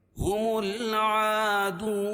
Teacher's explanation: हुमुल आदून, हुमुल और मीम को लाम में मिलाएंगे और उसके बाद हरूफ कमरी के 14 हरफों में से आयन है, तो यहाँ लाम पढ़ी जा रही है। दून वाव साकिन से पहले पेश हो तो वह मद्दा, उसको एक अलिफ के बराबर खींच के पढ़ेंगे, और वक्फ की सूरत में नून के ऊपर जो ज़बर है उसको जज़्म से बदल देंगे, तो यहाँ मद्द आरिस वक्फी होगा।